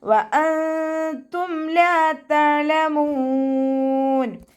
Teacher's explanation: നൂൻ സാക്കിനയ്ക്ക് ശേഷം ഇഖ്ഫാൻ്റെ ലെറ്ററായിട്ടുള്ള താ വന്നു. നൂൻ സാക്കിനയെ മറച്ചു വെച്ചിട്ട് മണിച്ചോതി കൊടുക്കുക. നൂനിൻ്റെ സൗണ്ടിനെ വ്യക്തമായിട്ട് കേൾപ്പിക്കരുത് കേട്ടോ. വഅൻതും ഒന്ന് ഹൈഡ് ചെയ്യും ചെയ്യുക, അതോടൊപ്പം തന്നെ മണിക്കും ചെയ്യുക.